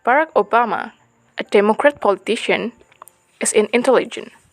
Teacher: parenticles are uttered on a lower pitch range than the preceding and following IPs